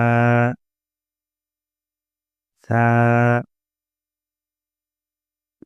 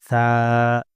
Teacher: दोनों दांतों के बीच में जबान को लगाएंगे